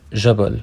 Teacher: the J sound of Modern Standard Arabic which is represented by the letter Jim is commonly pronounced J like the French J sound